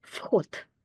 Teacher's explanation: I'm actually pronouncing it as F because it's followed by a voiceless letter so it will be fot